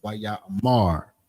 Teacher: putting that more emphasis on that last syllable, which is the mar. Not necessarily ra, because the ma and the ra are connected. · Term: stress on the final syllable